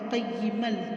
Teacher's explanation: ادغام کا مطلب ہوتا ہے داخل کرنا، تو میم لام میں داخل ہو رہا ہے قیمل۔ ادغام بغیر غنہ، یہ غنہ کے بغیر ادغام ہے۔